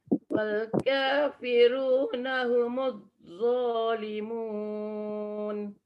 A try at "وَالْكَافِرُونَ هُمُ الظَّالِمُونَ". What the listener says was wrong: Itu terputus kan? Bila kita baca humul, tak ada suara, dia kena ada suara. Ya, humullah. Itu namanya rokhwah. Kita nak kena praktis lah apa yang kita dah faham tentang sifat rokhwah tu apa kan, melepaskan suara.